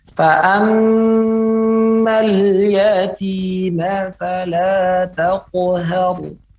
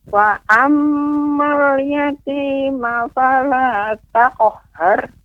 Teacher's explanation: Ayat yang ke-9 ada di situ mim bertasydid. Maka kita harus perhatikan untuk ditahan, ya, volumenya lebih lama.